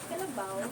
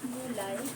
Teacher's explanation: malapatinig na W at Y, silang dalawa ay pinagsama-sama sa loob ng isang pantig at ito ay tinatawag na tina diponggo.